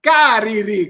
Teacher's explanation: Pero en muchas partes de Sicilia ustedes escucharán cariri con R